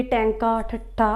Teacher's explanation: ਉਲਟ ਜੀਭੀ, ਟੈਂਕਾ, ਠੱਠਾ ਆਪਾਂ ਬੋਲਦੇ ਹਾਂ ਤਾਂ ਆਪਣੀ ਜੀਭ ਉਲਟ ਜਾਂਦੀ ਹੈ।